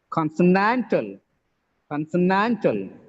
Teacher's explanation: the stress is on the penultimate syllable, that is nan.